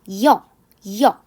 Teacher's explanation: 입 모양도 달라져요. 여 하려면 아무리 빨리 해도 순식간에 약간 평평했다가 모아지는 입 모양의 변화가 있습니다. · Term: 이중모음